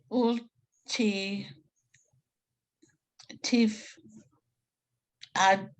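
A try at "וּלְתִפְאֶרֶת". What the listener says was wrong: Ul, tif, eret. Don't forget those, three dots. Okay, those three dots are eh.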